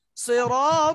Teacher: ডালটা খুব নরম করতে হবে জিহ্বার আগাটা দাঁতের আগার সঙ্গে লাগবে